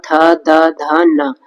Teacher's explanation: थ द ध न और इनका उच्चारण स्थान होता है दंत तो त वर्ग का उच्चारण स्थान दंत है